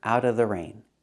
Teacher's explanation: We hear out of pronounced out of out of. The T in out is pronounced as a fast D. It's between vowels.